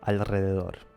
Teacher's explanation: it is difficult to pronounce the Spanish R [r] when it comes after an L